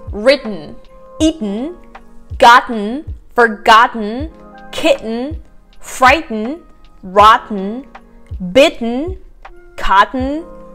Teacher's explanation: you don't really pronounce the T again, but you kind of make this sound like an air is coming out from your mouth, but you don't really pronounce the T. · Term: glottal T